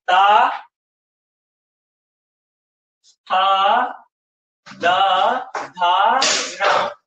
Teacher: जीभ हमारी जो है थोड़ा सा हमारे दांतों को स्पर्श करेगी, इसीलिए इनको दंत बोला गया है।